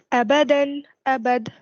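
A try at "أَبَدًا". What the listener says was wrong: If you were to stop there, what did we say? When you stop, you don't read the tanween. And in the case when there is a fathatain, you have the alif after, so then you read the alif. You don't read the tanween.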